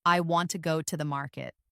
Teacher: For example, in the sentence, "I want to go to the market," the stressed words are want, go, and market. The smaller words like I, to, and the are less stressed. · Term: sentence stress